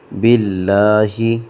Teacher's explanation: لفظ اللہ کو یہاں پہ باریک پڑھیں گے